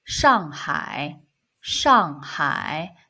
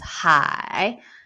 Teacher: third tone is hai, go down and then go up